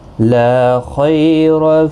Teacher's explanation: خا اور را دونوں پر پڑھے جائیں گے۔ خا حروف مستعلیہ میں سے ہے، را زبر کی وجہ سے پر پڑھا جائے گا۔ خی یالین بھی ہے، تھوڑا نرمی کے ساتھ آدھے الف کی مقدار کے برابر کھینچ کر پڑھیں گے۔ · لا الف مدہ ہے، ایک الف کی مقدار کے برابر کھینچ کر پڑھیں گے۔ خا اور را دونوں پر پڑھے جائیں گے۔